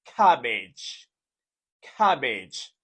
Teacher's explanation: this is a two syllable word with the stress on the first syllable